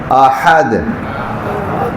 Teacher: قل هو اللہ احد، یہ ہا جو ہے یہ گلے کے درمیان سے